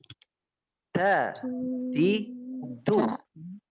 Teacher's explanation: Itu pelafalan huruf ta. Makhrajnya menyentuhkan ujung lidah dengan gusi-gusi gigi seri bagian atas, kemudian diucapkan dengan terdengar ada nafas yang mengalir, yaitu hamas.